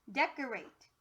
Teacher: it sounds like an uh instead of an o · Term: schwa